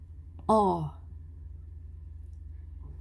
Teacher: Medyo O, pero hindi bilog.